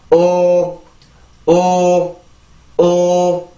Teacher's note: 치조유음. 자, 혀의 앞부분을 이용해서 내가 치조를 강하게 눌러주고 그런 다음에 내가 유음이에요. 소리가 흘러나와야 됩니다.